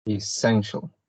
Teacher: this word has 3 sound syllables. So it has 3 syllables. And the stress is in the second one, essential.